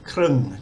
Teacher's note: We've got the ko, kwai, ro, rua, like a KR consonant cluster. We've got one of the short vowels that we did recently in a tutorial, and then the final ng, ngo, krung, just means half.